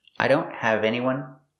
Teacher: with the tea and don't is a stock tea I don't the tongue goes up but you don't release it